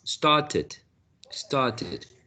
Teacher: instead of an e a schwa started started which is quite common in general american